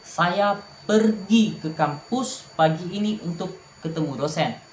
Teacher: Tekanan pada kata pergi untuk menegaskan sesuatu tindakan.